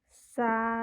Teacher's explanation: Huruf sin berharokat fathah, kemudian diikuti dengan huruf alif. Maka dia akan dibaca panjang 2 harokat ya. 2 harokat atau 2 ketukan. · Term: bacaan panjang fathah